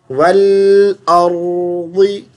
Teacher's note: आगे वल अर्दी, वल ला पर कलकला नहीं करना, रा पर भी कलकला नहीं करना, रा पर आवाज़ चलती रहे